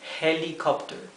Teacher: fonética lo he escrito con j pero no se olviden que la H inglesa es mucho más suave que nuestra J es como una exhalación